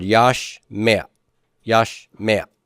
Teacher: They're produced in the same place. And so the A vowel sneaks in there because it's near the guttural consonant. · the A is furtive, so it's going to go up a little bit higher and small to indicate that it's not really a true vowel. So I would treat this as a two-syllable word, yash meh. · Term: furtive pathak